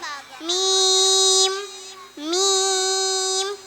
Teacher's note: ഇനിയുള്ള മൂന്ന് അക്ഷരങ്ങളും ചുണ്ടിൽ നിന്നാണ് രണ്ട് ചുണ്ടിന്റെയും നനഞ്ഞ ഭാഗം ബ ബ രണ്ടു ചുണ്ടിന്റെയും ഉണങ്ങിയ ഭാഗം